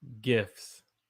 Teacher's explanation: So the T is silent. We don't say the T. So you say it like GIFS, gifts.